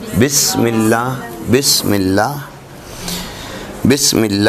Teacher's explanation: دونوں ہونٹوں کے اندرونی تر حصے متصل ہوں تو با کی ادائیگی ہوتی ہے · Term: حرف با